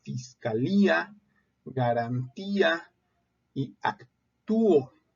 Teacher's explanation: son vocales que se encuentran juntas pero se pronuncian en sílabas distintas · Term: hiatos